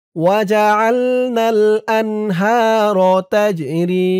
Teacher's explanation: রি এক আলিফ টান জেরের পরে ইয়া সাকিন